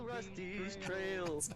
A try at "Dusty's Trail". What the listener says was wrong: It's Dusty's Trail, not Rusty's Trail.